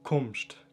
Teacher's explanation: tumst auf gegisch ist kumst da haben wir wieder ein K vorne und kein t